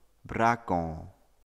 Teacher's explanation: hear this word with a nasalized o